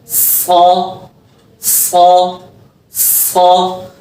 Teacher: इसके अंदर भी जबान की नोक नीचे वाले दांतों के पीछे से लगेगी और इसको पढ़ते हुए हमने आवाज बारीक नहीं मोटी करनी है, क्योंकि ये मोटे हर्फ में से है, तो सीटी सख्ती के साथ इसकी आवाज को हमने मोटा निकालना है। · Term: सौद